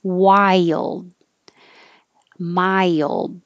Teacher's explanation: your tongue goes high when you say Y, and then slides down for the LD.